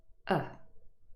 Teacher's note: Now, because these sounds in the syllables are unstressed, as a result, the vowel sound is reduced, and it is reduced to a short vowel sound, and very often it is reduced to a schwa sound. And remember, the schwa sound is simply a, and this is also a short vowel sound.